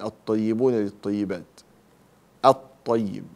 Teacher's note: هذه حروف اللام الشمسية فأدغمها